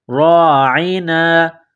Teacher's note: را کے اوپر زبر ہے، را کو موٹا کرنا ہے